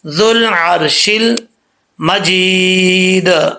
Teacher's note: ذال کو ڈائریکٹ لام کے ساتھ ملائیں گے